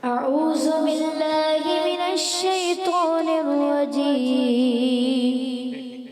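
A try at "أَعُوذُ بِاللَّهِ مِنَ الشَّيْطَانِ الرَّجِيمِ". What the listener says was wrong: بار بار یہ سمجھائے کہ اعوذ میں ذال کی ادائیگی کلیئر کرنی ہے، اعوذ۔ بیٹا دوبارہ پڑھیں۔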